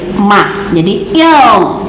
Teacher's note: Ujungnya akhirnya adalah bibir rapat, karena mim itu kan keluarnya dari dua bibir